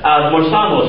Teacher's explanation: the emphasis is on the A, not on the stem